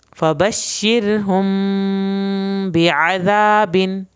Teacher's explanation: आइन को हल्क से पढ़ना है, दाल को नरम पढ़ना है, अलिफ इसका पूरा अदा करना है।